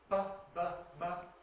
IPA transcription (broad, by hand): p, b, m